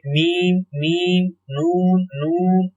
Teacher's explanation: आप इसकी प्रैक्टिस करेंगे तो आपको खुद मालूम हो जाएगा कि ये नाक की फिजा से अदा होते हैं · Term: गुन्ना